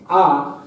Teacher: জিহ্বার সামনেও যাচ্ছে না জিহ্বা পেছনেও যাচ্ছে না, জিহ্বা কেন্দ্রীয় স্থানে অবস্থান করছে, তাই আকে বলা হয় কেন্দ্রীয় স্বর।